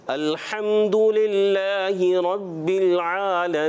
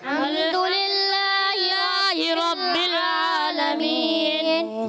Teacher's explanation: ہا کی زیر کو بھی لمبا نہیں کریں گے